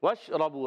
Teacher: شین ادا ہوتا ہے وسط زبان وسط تالو سے